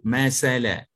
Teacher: Kalau kita tak keluarkan hujung lidah, kita akan sebut masala.